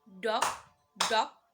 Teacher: New York's adopted a diphthong that features an ow sound.